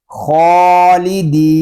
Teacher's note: دال کو ہم ایک الف تک کھینچ کر پڑھیں گے کیونکہ یہاں پہ یا مدہ ہو رہا ہے اور حروف مدہ کو ایک الف تک کھینچ کر پڑھتے ہیں.